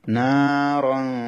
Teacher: মিলিয়ে পড়ার সময় আলিফটা পড়া হয় না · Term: আলিফটা বিলুপ্ত হয়ে যাবে